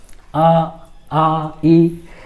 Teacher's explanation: निर्नुनासिक के उच्चारण में जो है सिर्फ मुख से ही हम लोग का आवाज, इसमें नाक पर जरा सा भी असर नहीं पड़ता है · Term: निर्नुनासिक वर्ण